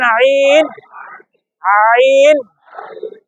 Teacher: এই আইনটা গলার মাঝখান থেকে চেপে বলেন